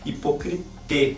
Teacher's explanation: esse ditongo ai não seria pronunciado como ai, seria pronunciado como e